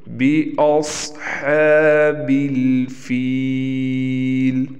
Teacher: صاد موٹا پڑا جائے گا اور حمزہ کو ہم نے واضح نکالنا ہے